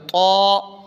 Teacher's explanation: تا نہیں پڑھنا بلکہ پڑھنا ہے طا موٹا کر کے طا